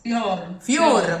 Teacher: Closed O's are closer to a U.